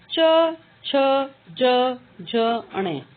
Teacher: जब हम इनका उच्चारण करते हैं तो उच्चारण स्थान तो होता है तालू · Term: च वर्ग